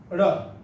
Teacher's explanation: ળ બોલો ત્યારે આપણી જીભ છે એ સેજ પછડાટ લે. એને કહેવાય થડકાર વાળો વ્યંજન.